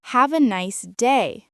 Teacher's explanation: The word nice gets extra energy.